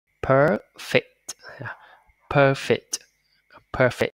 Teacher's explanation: nó là âm ơ dài, âm ơ kéo dài ra ha